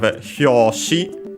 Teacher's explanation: It's actually accented on the last syllable, so be careful, despite being a Chinese compound.